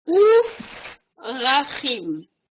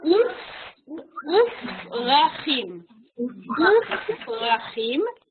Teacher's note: Alors, s'il n'y avait pas le Vav, effectivement, on prononcerait Prachim avec le dagesh, avec le son P, Prachim, Yeladim. Mais parce qu'il y a un Vav devant, alors le P qu'on voit ici perd le dagesh et devient F